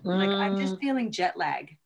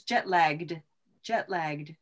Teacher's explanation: actually a lot of people would take the ED off of this.